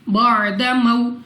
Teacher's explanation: यहाँ पे हमारे पास आइन को अपने मखरज से अदा करेंगे। वाव साकिन से पहले जबर वाव लीन बगैर खींचे बगैर झटका दिए पढ़ेंगे।